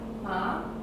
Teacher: Tone 2 is a rising tone from mid to high.